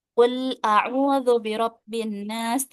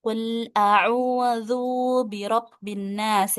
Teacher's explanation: dengan huruf dzalnya dibaca panjang